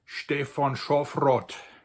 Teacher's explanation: a thing between an A and an O sound, kind of almost like a a Scandinavian Å with that little dot on top, (right?), like an Å.